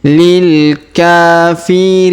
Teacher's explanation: Huruf Ri kita panjangkan 2 harokat karena ya sukun di depannya.